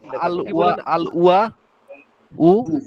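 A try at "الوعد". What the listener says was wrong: ওয়াদু ওয়াদু আইন উচ্চারণ করেন,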